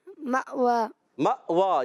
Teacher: حمزہ ساکنہ کو جھٹکا دے کے پڑھیں